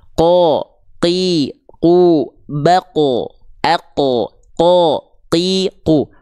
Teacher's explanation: huruf q karena pangkal lidahnya bersentuhan dengan langit-langit yang lunak dia punya sifat yang namanya jahr dia enggak keluar percikan-pererecikan nafas Tapi dia jahar jahar itu tertahan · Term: huruf qaf